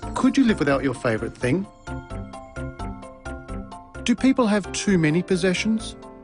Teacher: Rising intonation patterns are used for these questions. Did you notice the pitch of his voice rise at the end of the questions?